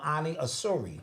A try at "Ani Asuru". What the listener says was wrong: Asuru. Yeah, Asuru. Like that. It's a U. It's not an I in his name.